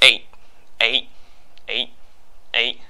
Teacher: think of the English eight but without the T sound